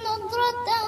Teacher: no double sound in the harf of dhad, no qalqalah, because dhad is not from the letter of qalqalah. Only one sound comes from the dhad.